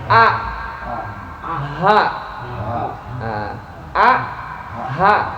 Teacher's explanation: Ha sama hamzah itu dari halqiyah, dari tenggorokan. Aqsal halqi tenggorokan bagian dalam atau bawah.